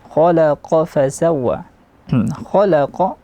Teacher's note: Khalaqa, kha-nya isti'la, tekanan suara ke langit mulut. Kha, la tipis, kha tebal, la tipis, qa tebal lagi, qaf.